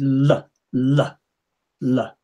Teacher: taking the tip of the tongue quickly away from the front teeth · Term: light L